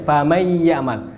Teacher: Lebur. Nun dimasukkan ke ya, nun hilang. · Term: idgham